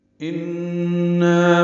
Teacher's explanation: ان میں نون مشدد ہے، یہ غنہ ہے، آواز ناک کے وہاں سے ملے جا کر دو حرکات تک ٹھہرائیں گے. نا الف مدہ ہے، دو حرکات لمبا کریں گے.